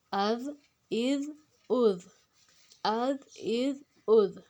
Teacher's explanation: اس میں زے کی آواز نہیں لانی، زال کو پڑھنا ہے